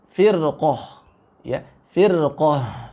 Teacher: Ro-nya dibaca dengan tebal, tafkhim. Kenapa? Karena setelah itu ada huruf isti'la yang berbaris fathah.